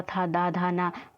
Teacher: ता वर्ग की ध्वनियां का उच्चारण स्थान क्या है दंत है